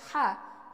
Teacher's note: হলকের মধ্যখান থেকে উচ্চারণ অর্থাৎ হা পাতলা করে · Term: বড় হা